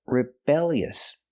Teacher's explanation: We see with the adjective, the stress is on the second syllable, rebellious.